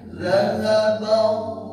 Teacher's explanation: Pas baca Allah, coba lebih dibuka mulutnya bang sehingga tidak arah ke O. Allah lebih dibuka tikalnya.